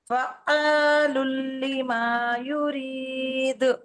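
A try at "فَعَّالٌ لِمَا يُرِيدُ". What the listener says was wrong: तो इसमें गड़बड़, फा आइन को रोकेंगे ना, हाँ, और थोड़ा लंबा करिए आइन को, फ़अलुल लिमा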